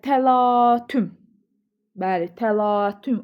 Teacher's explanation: A uzanır. Vurğu da sona düşür.